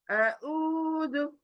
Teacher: अ उदु वाव पेश मद्दा आया। देखिए पेश के बाद मद्दा खींचेंगे दो आवाज